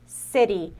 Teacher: esse T, ó, a gente muda como se fosse o R de cara